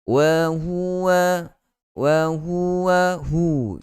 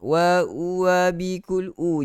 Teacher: hu daripada pangkal tekak kita, dalam sekali hu